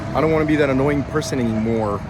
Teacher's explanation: Like I'm very breathy and I'm very complainy.